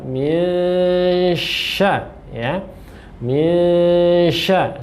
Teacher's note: bacaan nun sukun bertemu dengan shin, ya, samarkan ketika membaca, dan di tengah-tengah ada dengungan